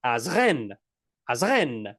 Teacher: So you have to emphasize the last syllable of the word.